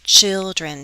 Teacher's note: children, 2 syllables, stress on the first